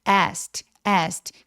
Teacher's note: k는 기억 받침 정도로 아주 가볍게만 처리해서 거의 소리가 나지 않아요.